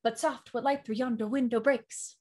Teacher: ten syllables long of five feet of an unstressed and stressed syllable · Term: iambic pentameter